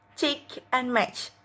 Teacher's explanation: And then the English affricative sounds are cheek and match. Air is blocked with tongue just beyond the alveolar ridge or post-alveolar, then realized as a affricative.